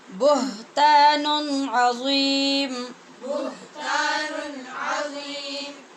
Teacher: یہاں پر بھی اظہار ہوگا، نون تنوین کے بعد عین ہے